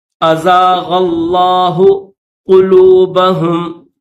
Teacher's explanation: غین کو لفظ اللہ کے ساتھ ملائیں گے، اس غین کو بھی موٹا کریں گے